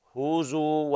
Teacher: نفس زمن الضم في الهاء هو مقدار زمن الضم في الزاي